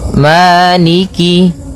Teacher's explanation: Jadi kemudian kasrahnya juga disempurnakan. Jangan sampai dibaca dengan e, tapi dia i.